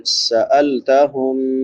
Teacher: सीन सीटी वाले हरूफ में से है, सीटी के साथ अदा करेंगे।